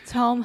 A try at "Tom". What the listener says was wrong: Tom. Fechar a boca com M.